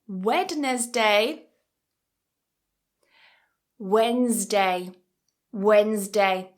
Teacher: That D is silent